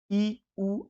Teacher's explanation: आप स्वयं देखिए कि ई में मुंह नहीं खुल रहा है और उ में भी मुंह नहीं खुल रहा है। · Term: समृद्ध